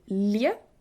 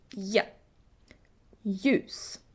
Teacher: The easiest is LJ. Basically, you ignore the L. You don't say lje, you say ja.